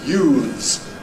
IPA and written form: juːðz (youths)